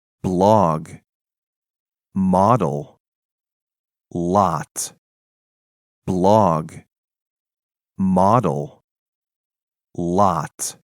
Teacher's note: 지금 이 O 사운드 같은 경우에는 전부 다 짧은 아 사운드 비슷하게 납니다. 그래서 단모음이라고 표시를 해 두었고요. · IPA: [ɒ]